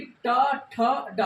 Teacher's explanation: आपको जीभ जो हल्का से घूम रही है, ऊपर साइड उठ रही है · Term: मूर्धा